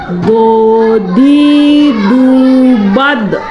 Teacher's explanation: huruf yang keluar dari tepi lidah baik kanan atau kiri. Jadi dia sedikit memantul ke bagian pipi kiri atau pipi kanan. Hurufnya adalah huruf do.